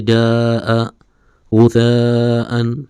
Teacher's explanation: حروف مدہ تقریباً واو یا اور الف ہی ہیں. مد متصل کو 3 سے 4 الف کی مقدار یعنی 3 سے 4 سیکنڈ لمبا کر کے پڑھتے ہیں